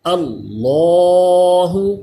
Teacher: لفظ اللہ کے لام سے پہلے زبر ہے، اس لیے اس کو پر پڑھیں گے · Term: لام پر